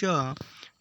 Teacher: श श उष्म व्यंजन है